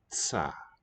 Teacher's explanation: the S showing up there, tsa, is just a slow release of the tongue tip from the T position. If you release it quickly, ta, and if a little more slowly, tsa, transitional S.